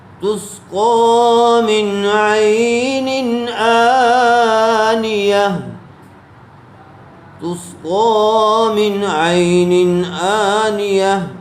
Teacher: تنوین کے بعد پھر حروف حلقی میں سے حمزہ آیا ہوا ہے، اس لیے بغیر غننے کے جلد اظہار کر کے پڑھیں گے